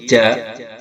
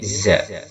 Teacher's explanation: Jim di tengah lisan, sedangkan za ujung lisan. Dengan gigi bawah yang ujungnya za.